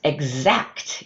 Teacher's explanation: In the words exact you hear the /g/ /z/.